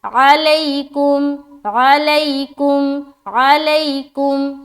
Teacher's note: یا ساکن، اس سے پہلے زبر آ گیا لہٰذا یا لین ہو گیا، اور نرمی کے ساتھ جلد ادا کریں گے